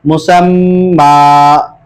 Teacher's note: کھڑے زبر کی طرح ایک الف کی مقدار کھینچ کے پڑھیں گے، مسما۔ غنہ دونوں صورتوں میں ہوگا، رواں میں بھی ہوگا اور وقف میں بھی ہوگا۔